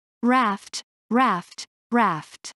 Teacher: your upper molers next we have the vowel sound in raft this is a short vowel sound as in cat your mouth should be open wide and relaxed with your tongue flat and low in the mouth